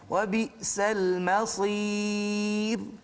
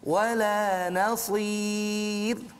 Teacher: Sebelum dia ada huruf ya mad, maka di situ dibaca dengan nipis. Jangan tebal.